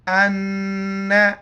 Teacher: نون پر شد ہے، نون پر غنہ کریں گے